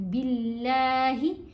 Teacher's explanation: با کے نیچے زیر آ گئی نا، تو اب ہم نے اللہ کی لام کو موٹا نہیں پڑھا، یہاں باریک پڑھی جائے گی